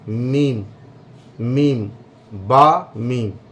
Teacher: तो दोनों होंठ से मिलकर के बा और मीम अदा होते हैं, लेकिन फ़र्क दोनों में ये होता है कि जब तरी मिलती है होंठों की तो बा अदा होता है, और जब खुश्की मिलती है तो मीम अदा होता है।